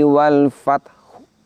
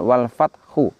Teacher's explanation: Wal fathu tetap kita bacakan wal fathu, namun hak dhammahnya bunyinya lirih. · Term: waqaf raum